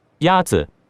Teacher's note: The first tone is a high, level tone.